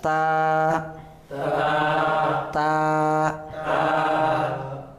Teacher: Ta tempatnya di ujung lidah bertemu dengan pangkal gigi seri atas